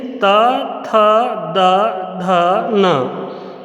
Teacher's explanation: बोल के देखिए, त, थ, द, ध, न। जीभ दांत पे आकर के टकराएगी और जब जीभ दांत पे टकराती है तो अंदर की वायु दांत पे आकर के रुकती है और इस कारण से हम ता वर्ग के वर्ण बोल पाते हैं।